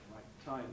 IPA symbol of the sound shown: t˺tʰ